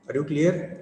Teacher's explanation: We ask a question in rising tone, and that tone has the implication that the next person should answer as per the expectation of the speaker.